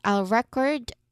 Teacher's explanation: The stress syllable is on the second